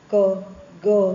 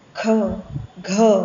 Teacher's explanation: તો આપણે જોયું હતું કે હવાનો જથ્થો જો ઓછો વપરાતો હોય તો એવા ધ્વનિઓને અલ્પપ્રાણ ધ્વનિઓ કહેવાય, ક, ગ એ બધા. અને વધારે વપરાતો હોય તો મહાપ્રાણ ધ્વનિઓ કહેવાય